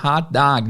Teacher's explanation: essa vogal não é um O em si, é quase um A